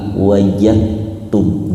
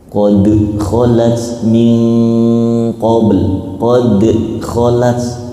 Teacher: yang biasanya dal itu wajib dibaca qalqalah, namun ketemu ta nggak boleh dimantulkan lagi, tapi lebur ke ta